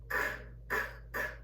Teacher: It sounds like I'm whispering, so that is voiceless